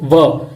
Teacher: दांत और होठ टच करेंगे तो ये जो वर्ण उच्चारित होगा वो है व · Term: दंतोष्टम